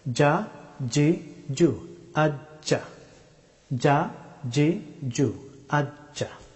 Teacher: জিম হরফটি উচ্চারিত হয় জিহ্বার মধ্যস্থল সোজা উপরের তালু